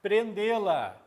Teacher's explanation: O timbre em prendê-la é o timbre fechado, representado pelo acento circunflexo